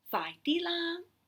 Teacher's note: The la, high tone la, is what you will use if you want to put a bit of a command, a request, or a suggestion tone into your voice.